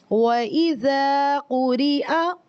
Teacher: اس میں بھی ہم نے صرف زا کو لمبا کیا ہے، کیونکہ یہاں پر الف مدہ آ رہا ہے.